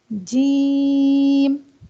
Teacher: जुबान का दरमियानी हिस्सा ऊपर जब तालू पर लगता है तो एक हर्फ अदा होता है जीम · जीम एक लाइट लेटर है और इसे अदा करते हुए भी हमारी आवाज हमारा साउंड बारीक होता है हमारी आवाज मोटी नहीं होती हमारी आवाज बाहर को निकलती है · زبان کا درمیانی حصہ جب اوپر تالو پر لگتا ہے، چپک جاتا ہے بالکل، تو ایک حرف ادا ہوتا ہے جیم.